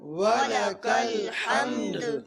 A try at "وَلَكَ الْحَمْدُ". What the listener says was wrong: یہاں پر بھی وَلَكَ الْحَمْدِ کے اس کلمے میں دال کی ادائیگی نہیں ہوتی. وَلَكَ الْحَمْدِ دال نہیں پڑھی جاتی، تو دال کا قلقلہ بہت ضروری ہے. وَلَكَ الْحَمْدِ